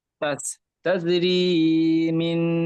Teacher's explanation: এখানে তা জিম যাবার তাজ, জিমটি কলকলা হবে। হরফে কলকলা জি 5টি অক্ষরের মধ্যে একটি অক্ষর জিম।